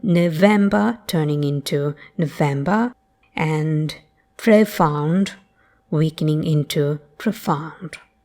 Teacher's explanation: A corollary of the shift is that the goat vowel is often replaced by a mere schwa